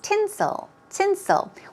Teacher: stress goes on the first syllable